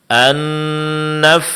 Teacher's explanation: mad alif setelah fa dan tsa dua-duanya mad thabi'i panjangkan dua harakat